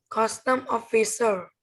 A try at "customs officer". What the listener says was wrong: Customs officer. With S. Customs officer. Customs officer. Read again. Customs officer.